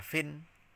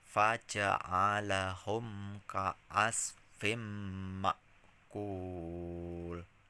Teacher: Nah, ini terakhir sama dengan yang di atas ya, ada tanwin, kasroh tanwin ketemu mim, ini idgham, tidak dibaca fin tetapi fim ya